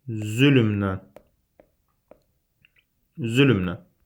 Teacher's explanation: Sözdəki samitlərin hamısı cingiltilidir. Z cingiltili, l cingiltili, M cingiltili, N cingiltili, N cingiltili.